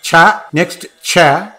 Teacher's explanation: when you say cha, this cha reverberates, for it's a palatal